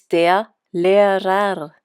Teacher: The ending er at the end of a word sounds like a short a.